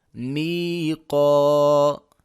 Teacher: یا ساکن سے پہلے زیر ہے تو یا مدہ ہے، یہاں پر مدہ ہوگا، 1 الف کے برابر لمبا کریں گے، الف سے پہلے زبر ہے تو یہاں پر بھی مدہ ہوگا، 1 الف کے برابر لمبا کریں گے۔